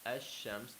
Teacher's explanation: The lam is merged with the sheen. So we don't say al-shams. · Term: idgham